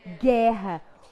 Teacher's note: O U não foi pronunciado agora. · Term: dígrafo